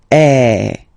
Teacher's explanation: the sound that you will have to produce is e. So it's really open. I mean the sound is really open.